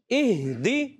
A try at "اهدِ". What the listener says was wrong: ہا کی ادائیگی کلیئر کرنی ہے. ہا ادا ہوتا ہے حلق کے نیچے والے حصے سے